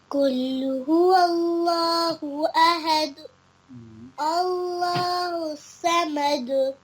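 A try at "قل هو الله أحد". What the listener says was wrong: ہا صاف پڑھیں. یہاں بھی ہا آپ نے صاف نہیں پڑھا ہے، ادھر بھی صاف نہیں پڑھا ہے. ہا ٹھیک ہے، ہا پڑھ رہی ہیں آپ اس کو، یہ ہا ہے.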